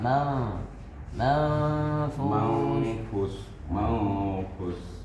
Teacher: kita baca fa fa ma ma karena dia bertemu dengan fa nun bertemu dengan fa maka fanya ee ikhfa dan kemudian posisi mulut sudah masuk ke dalam posisi huruf fa